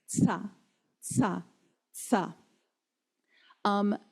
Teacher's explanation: you're going to actually say a t sound followed by a s sound by rolling your tongue down your teeth.